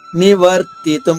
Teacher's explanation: పాపాదస్మానివర్తితుం నివర్తితుం [నవ్వు] రా కి తి సంయుక్తంగా వచ్చింది అంటే ఒత్తుగా వచ్చింది. నివర్తితుం కానీ ఆఘాత ఉండదు ఇది సంయుక్త అక్షరమే కానీ ఆఘాత ఉండదు